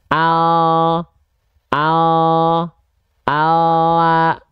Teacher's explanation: kalau huruf l itu yang disentuhkan biasanya hanya bagian ujung akhir lidah kita saja